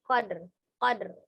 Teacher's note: Disukunkan karena ro kasro terakhir di tanda wakof berarti disukunkan. Jadi dalnya sukun, ro-nya juga sukun. Ro-nya sukunnya lebih samar daripada dalnya. Nah, berarti huruf terakhirnya itu bukan dal ya, tapi ro sukun.